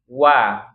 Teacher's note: kedua Bibir dia tempat keluarnya ya monyong dulu baru dibuka wa justru dia harus monyong ya Jadi huruf itu yang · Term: huruf Wau